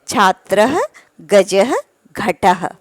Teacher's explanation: सभी शब्दों के आगे विसर्ग लगा हुआ है जिसके साथ हमें ह ध्वनि का उच्चारण करना है